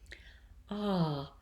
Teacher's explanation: imagine that the turned A is an R-colored bright ah